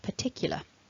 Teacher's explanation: we stress the tick component which is the second syllable of the word so particular tick is the strong part so thinking about the